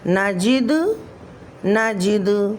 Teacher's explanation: دال حروف قلقلہ میں سے ساکن حالت میں کلمے کے آخر میں آ رہا ہے تو یہاں پر بھی قلقلہ کبریٰ ہوگا